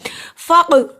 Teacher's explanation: क़ाफ पे क़लक़ला हुआ क्योंकि क़ाफ जज़म की सूरत में है